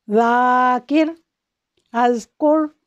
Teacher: زال، اس کو باریک پڑھتے ہیں اور نرمی سے پڑھتے ہیں